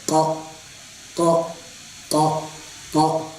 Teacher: क ये जबान से अदा होता है। इसमें होठों का कोई दखल नहीं है। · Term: काफ